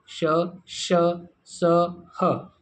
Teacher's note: ऊष्म वर्ण होते हैं, जिनको बोलते समय मुख से गर्म हवा निकलती है